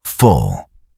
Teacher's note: A darker L appears near the end of words like full.